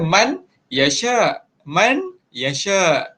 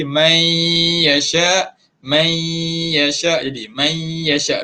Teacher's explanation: Idgham bi gunnah ni dia punya kaedah dia, kita kena masukkan nun kepada huruf ya. Jadi asal dia bunyi dia man yasha, tetapi bila dah jadi idgham jadi may yasha, jadi may yasha begitu.